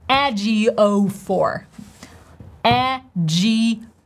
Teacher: the transcription tells us to stress the very first syllable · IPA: ˈedʒioʊfɔːr